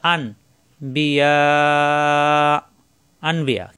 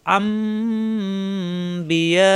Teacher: এখানে মাঝের হরফে এক আলিফ টান, এর বাম পাশে গোল হামজা আসায় চার আলিফ টান হবে, আর উপরে চার আলিফের সংকেত আছে, এই জন্য এখানে চার আলিফ টান। আর এখানে নুন সাকিনের পরে বা আসায় এই নুন সাকিনকে পরিবর্তন করে মিম ধরে গুণ্য করে পড়তে হবে। আম বিয়া ও, সবাই খেয়াল করেন এখানে কিন্তু ছোট মিম দেওয়া নাই।